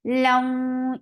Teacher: idgham with gunna. So keep the sound in your nose for a longer time